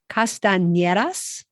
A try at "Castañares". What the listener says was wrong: I think you switched the last two, the A and the E. Swap them around.